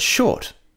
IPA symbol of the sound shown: ʃ